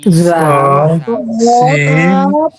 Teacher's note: জিহ্বার আগা সামনের নিচের দুই দাঁতের পেট ও আগার সঙ্গে লাগিয়ে উচ্চারিত হয়